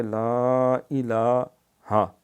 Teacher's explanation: لام کے اوپر کھڑی زبر ہے، یہ ایک الف جس طرح اس کو لمبا کریں گے، آگے ہا کے اوپر خالی زبر ہے، اس کو لمبا نہیں کرنا۔